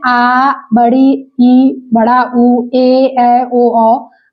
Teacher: जिनके उच्चारण में ह्रस्व स्वर से अधिक समय लगता है, मतलब 2 मात्रा का समय लगता है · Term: दीर्घ स्वर